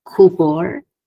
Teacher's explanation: So bor gets the primary, ku gets the secondary stress.